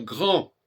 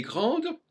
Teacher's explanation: si je dis elle est grande, je saurai qu'il faut prononcer le D final